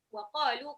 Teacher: qafnya 2 harokat, lamnya 2 harokat